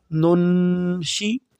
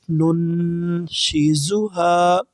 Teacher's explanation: شین جو ہے یہ بھی حروف اخفا سے ہے، ہلکی میں سے نہیں ہے، تو یہاں بھی ہم نون پر جزم والی نون پر غنہ کریں گے۔